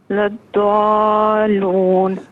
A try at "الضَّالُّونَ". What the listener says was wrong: اب آپ ضاد کو اور لام کو الگ الگ پڑھ رہی ہیں. الگ نہیں پڑھنا. ضاد کو لام کے ساتھ ملا کر جماؤں کے ساتھ پڑھنا ہے. ضالون.